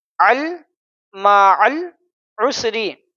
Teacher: العسر، ری، عسری، معل، عین کو لام میں ملانا ہے، یہ حروف قمری ہے، الف نہیں پڑھیں گے لیکن لام کو پڑھیں گے